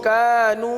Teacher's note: جتنا کا کو کھینچا اتنا نو کو کھینچنا ہے